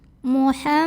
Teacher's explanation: mim didengungkan, bunyi emnya tahan kurang lebih 2 harokat. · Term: gunnah musyaddadah